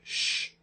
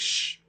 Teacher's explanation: we know that's a palatal alveolar sound or a post alveolar sound and it's continuous so we call it a fricative